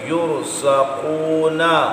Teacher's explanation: قاف کو بھی پر پڑھنا ہے کیونکہ مستعلیہ ہے، اور را ساکن سے پہلے پیش ہے، را کو پر پڑھیں گے۔